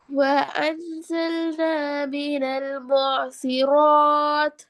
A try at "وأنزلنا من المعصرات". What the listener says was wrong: போதாது. பூசிராத்துல எத்தனை செகண்ட் நீட்டி நிப்பாட்டணும்? ஏனது இந்த ராவை எத்தனை செகண்ட் எத்தனை கவுண்ட் நீட்டி நிப்பாட்டணும்? ரீசன் என்ன?